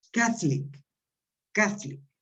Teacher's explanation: En castellano sería católico, el acento iría en la O. En inglés no, el acento se marca en la A.